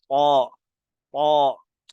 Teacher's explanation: تا پتلا بھی نہیں پڑھنا، طوا بھی نہیں پڑھنا